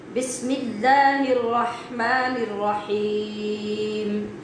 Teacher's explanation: بس میں جو سین ہے، سین میں سیٹی کی آواز پیدا کرنی ہے